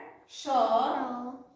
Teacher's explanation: ऊष्म व्यंजन कहते हैं कि मुख में घर्षण पैदा करती है